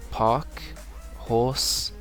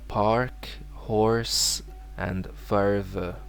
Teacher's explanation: in American English they do pronounce the written R